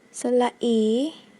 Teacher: 發音時舌身稍往後縮，舌根向軟腭略微抬起，口腔內肌肉鬆弛，唇形扁平而發出音。